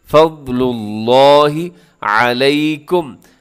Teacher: لفظ اللہ کو اپنے بھارا پڑھنا ہے، موٹا کر کے پڑھنا ہے